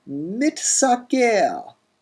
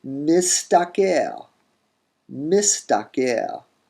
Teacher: metathesis happens with the sibilant and the tav, and you get mistaker, mistaker. The key with these is to recognize that you have a hithpael participle with that mit thing going on, and realize that the where you expect mit, you're dealing with mis or mish before that tav comes along.